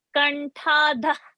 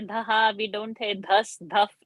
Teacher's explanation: this particular visarga before the ka varga, we don't chant that visarga, but we lift it and drop